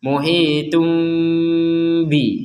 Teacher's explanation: seakan-akan kita akan melafalkan huruf mim, seakan-akan, tapi ternyata kita lanjutkan dengan huruf ba itu